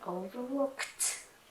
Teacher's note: bởi vì âm cuối của nó là một âm vô thanh, để tay vào hàm cổ, không có rung